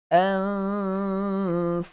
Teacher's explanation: Nun mati bertemu dengan fa. Ikhfa hakiki. Untuk kita sembunyikan bunyi nun itu ke dalam huruf fa.